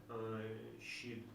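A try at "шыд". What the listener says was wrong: Шит щелы. Шит. У тебя так близко к щит получается. Шит щелы.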